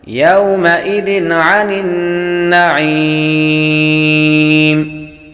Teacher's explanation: ذال پر تنوین ہے، تنوین کے بعد عین حروف حلقی میں سے آ رہی ہے تو غنہ نہیں کریں گے، اظہار کا قاعدہ لگے گا۔